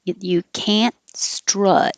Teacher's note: the negative can't you won't hear the t you can't strut the vowel is uh like up and be